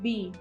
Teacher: अब मैंने जब बी बोला तो हमारे जो लिप्स हैं दोनों वो बंद होंगे और ब्लॉकेज होगी, एयर ब्लॉकेज होगी, ठीक है, तो लिप्स टच होंगे, ठीक है.